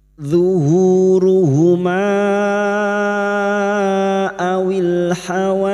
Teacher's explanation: pada saat dibaca wasal atau terus maka kita panjangkan lima harakat